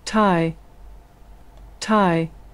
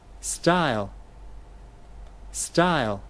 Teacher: cái âm T bật hơi trong tiếng Anh nó có khuynh hướng gần giống như là âm thở trong tiếng Việt